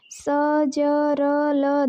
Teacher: स, ज, र, ल दंतमूल से यहाँ ऊपर का मसूड़ा व दांत मिलते हैं। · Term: वत्स्य